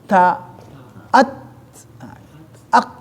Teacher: si ta itu huruf sifatnya sifat hamas. Dan tidak hamas doang, ada syiddahnya, ada kuatnya